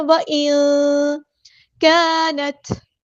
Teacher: نون ساکن کے بعد ہم چھپا دیں گے، اخفا ہوگا ، وَإِن نہیں کرنا، وَإِن كَانَتْ الف مد ہے تو مد